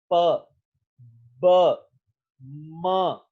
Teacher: जैसे हमारी बाइलिबियल साउंड्स हैं, अगर हम लोग दोनों लिप्स आपस में नहीं मिलाते तो ये साउंड प्रोड्यूस ही नहीं हो सकती।